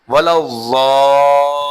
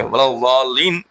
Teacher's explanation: زیادہ کھینچیں گے، وَلَوْ ضَالِّينَ میں زواد مد ہے